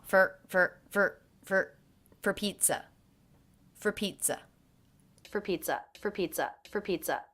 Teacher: I definitely hear the first syllable of pizza as being stressed. The word for was reduced. It had the schwa